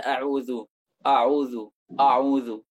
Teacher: Banyak sekali mereka orang-orang yang menebalkan hamzah pada a'udzu